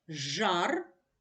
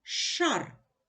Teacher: звук Ж дзвінкий ш глухий